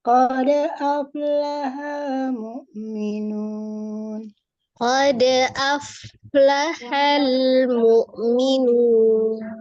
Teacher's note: Qalqalah itu artinya dipantulkan karena dia di tengah atau di wasol atau disambung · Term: Qolqolah Sugro